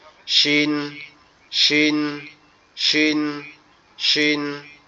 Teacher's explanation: আপনাদের জিহ্বার মধ্যকান উপরের তালুর সঙ্গে লাগবে। তো উপরের তালুর সঙ্গে লাগাইতে হলে আমাদেরকে কি করতে হবে, দুই দাঁতের দুইটা যে পাটি আছে, একটা নিচের একটা উপরের, এই দুইটা একসাথে লাগায় রাখতে হবে, লাগায় পড়তে হবে শিন, শিন, শিন, শিন, এভাবে ইনশাআল্লাহ।